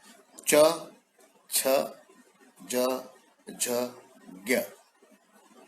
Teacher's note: च, छ, ज, झ, ज्ञ, मराठी में ज्ञ कहते हैं। ये तालव्य इसलिए कही जाती है क्योंकि इनके उच्चारण के समय हमारी जीभ तालु के पास स्पर्श होती है। आप बोलिए च, यानी दांत के ऊपर जो तालु का भाग है वहां पर जाकर जीभ टकराती है, तब आप च बोलते हैं।